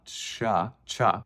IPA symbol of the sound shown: t͡ʃ